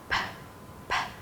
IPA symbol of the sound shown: p